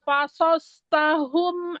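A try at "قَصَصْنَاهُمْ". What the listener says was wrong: Kodoko. Bukan fa, kodoko.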